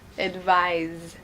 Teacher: so here it has the Z sound so that's why we say a longer vowel